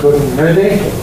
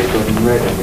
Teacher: What you get out of it is a syllabic N